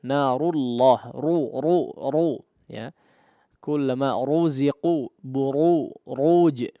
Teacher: Tapi ru, ya, ditebalkan suara ra-nya